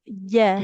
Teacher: Kalau jim itu dia tengah lidah menempel ke langit-langit.